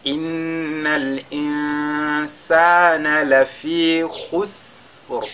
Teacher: Insana, nous avons An-Nun Sakina suivi de la lettre Sin. On fera Al-Ikhfa à ce niveau.